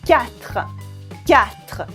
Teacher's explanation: I don't say the U, I don't say the E at the end.